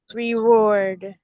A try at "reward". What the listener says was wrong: It's a double. It's a V. Put a V in there. It's a trilled R. This is tough because you're looking at the word and you're seeing W and you want to say W.